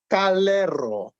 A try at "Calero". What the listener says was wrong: Calero. You have to roll the R. Calero.